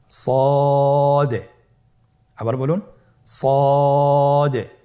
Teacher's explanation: জিহ্বার আগা, সামনের নিচের 2 দাঁতের পেট ও আগার সঙ্গে লাগিয়ে উচ্চারিত হয়। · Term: সদ হরফের মাখরাজ, সদ